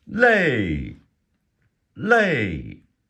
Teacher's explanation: L EI fourth tone means tired